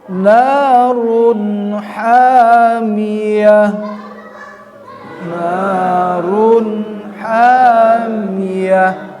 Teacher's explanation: Setelah tanwin, baik fathatain atau kasrotain, domatain, berhadapan dengan huruf ha, maka bacaannya menjadi jelas, tidak berdengung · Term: huruf izhar